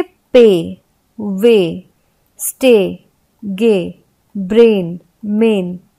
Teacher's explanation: तो यहाँ पे जहां जहां वाई और आई के पहले ए लगा तो ए का ही उच्चारण आया, लेकिन वो थोड़ा लंबा होता है। अब यहाँ पे जैसे अगर ये वाई और आई के साथ नहीं होता तो उच्चारण छोटा होता।